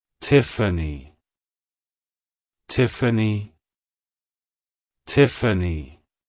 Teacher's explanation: from the Greek name theophania it's pronounced as Tiffany Tiffany Tiffany to pronounce it correctly emphasize the first syllable Tiff and then the second syllable an a like hello Tiffany goodbye